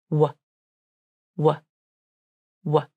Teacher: There is tension in the lips as they round and the corners come in. There is secondary tension in the throat as the vocal cords come together and tense slightly. W, W, W. This helps to shape the airflow as it travels from the throat and out through the rounded lips. · The tongue arches up and moves up and back towards the soft palate, and the sides of the tongue may rest against the inside of the upper back teeth. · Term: W consonant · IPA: /w/